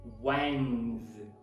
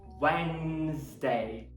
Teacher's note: Você começa com w, depois o epsilon, depois nz. Wednesday. Não tem esse D na pronúncia, ok?